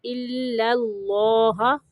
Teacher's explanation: پہلا لام باریک پڑھنا ہے، دوسرا لام موٹا پڑھنا ہے